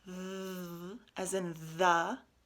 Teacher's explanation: if you say th, as in the, you can feel it on your throat. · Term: voiced TH